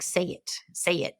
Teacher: She has a so-called Southern drawl, which in linguistics refers to kind of dragging, like your vowel sounds are lengthened, like literally they're longer in duration, and they often what we call break into more than one part.